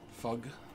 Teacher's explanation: some British accents pronounce the th sound as F